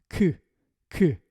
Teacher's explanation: then you need to pronounce the k in the back of your mouth.